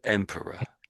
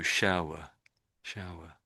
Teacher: the R's are a bit dead, especially at the end of a word, if not entirely dead. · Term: schwa